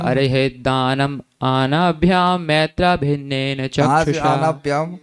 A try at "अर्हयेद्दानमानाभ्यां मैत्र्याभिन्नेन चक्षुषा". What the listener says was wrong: कहाँ से आनाभ्याम, मानते नहीं मानभ्याम मानते नहीं मानभ्याम, आनाभ्याम कर दिया आपने। अर्हयेद्दानमानाभ्याम मैत्रेयाभिन्नेन चक्षुषा।